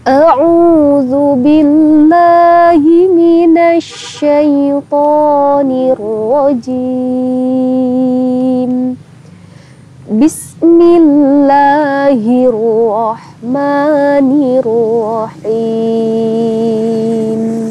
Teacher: Nada yang pertama naik, nada yang kedua datar, nada yang ketiga turun. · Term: rumus nadanya